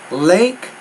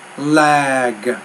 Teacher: because the G's at the end and it's a voiced consonant you want to make that vowel a little bit longer